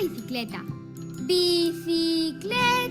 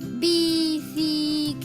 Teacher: la sílaba cle suena más fuerte que las otras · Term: sílaba tónica